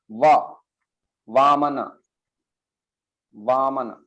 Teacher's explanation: वामन ये दंतोष्ठ, अपर teeth and lower lip.